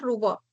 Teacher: la U la vas a considerar como alta posterior